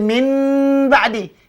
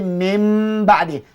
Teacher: kalaulah nun ini mati bertemu dengan ba, maka kita tukar nun ini jadikan mim, ya. Jangan bunyi katalah macam mim ba'di, jangan baca min ba'di, kena baca mim ba'di. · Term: Tukar nun dengan mim